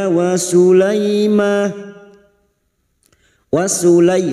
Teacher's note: terbalik masing-masing dua harakat kita panjangkan Mad thii Daud walaim waulai fathah bertemu Ya Sukun kita lunakkan